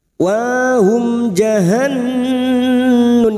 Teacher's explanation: mim sukun bertemu jim idhar safawi, dibaca jelas tanpa mendengung.